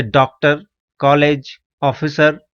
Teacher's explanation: यह आ और ओ के मध्य की ध्वनि है